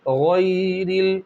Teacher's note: गैन की अदायगी को अच्छे तरीके से अदा करना है, गैन को मोटा पढ़ना है, साथ ही साथ या लीन होगा तो या को नर्म आवाज़ के साथ अदा करेंगे। गैरिल, रा बारीक होंगी इसलिए कि रा के नीचे ज़ेर है